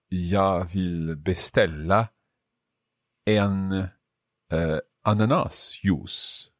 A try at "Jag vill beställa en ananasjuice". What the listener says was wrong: Perfect. And I would say a little bit quicker with ananas. So jag vill beställa en ananas juice.